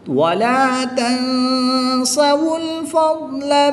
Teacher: نون ساکن کے بعد سین حرف اخفا میں سے ہے تو یہاں پر اخفا ہوگا یعنی غنہ زمانی کر کے پڑھیں گے